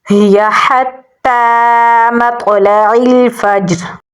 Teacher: فا کو ہم جیم کے ساتھ ملائیں گے کیونکہ جیم کے اوپر بھی جزم ہے اور یہاں پر بھی کمزور قلقلہ ہوگا. را کی زیر کو ہم ساکن کر دیں گے تو را پر یعنی موٹا پڑھا جائے گا